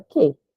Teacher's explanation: Porque o U, ele não tem som. A gente não fala que, a gente fala que.